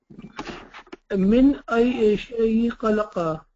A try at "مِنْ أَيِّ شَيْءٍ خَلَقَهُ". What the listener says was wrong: من أي شيء خلقه. In. You have to remember to pronounce the in, okay?